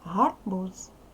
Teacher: у нас з кінці треба вимовляти дзвінко